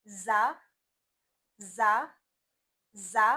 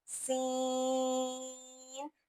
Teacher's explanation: जा, सीन। सीन में सिफत यह है कि उसको खींचा जाता है, जा को हम खींच कर नहीं पढ़ेंगे।